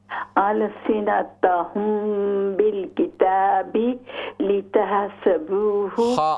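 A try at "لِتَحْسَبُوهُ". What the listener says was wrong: हा को दुरुस्त करें, लाम एम्प्टी माउथ है, मोटा नहीं करेंगे।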